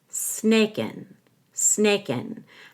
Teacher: I'm going to hold the K and let out a g which connects to the N